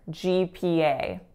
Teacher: all of them are moving they're not pure vowels